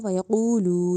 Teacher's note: قوف کو لمبا بھی تو کرنا ہے کیونکہ اس سے پہلے واؤ سے پہلے پیش ہے تو واؤ مدہ بن رہی ہے، اور لام میں بھی واؤ سے پہلے پیش ہے تو واؤ مدہ وَيَقُولُو، ٹھیک ہے۔